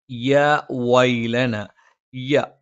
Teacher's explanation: നാവിന്റെ മധ്യഭാഗം മേലെ അണ്ണാക്കിലാണ്